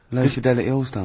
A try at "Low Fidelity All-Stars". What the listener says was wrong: just you didn't open your mouth wide enough.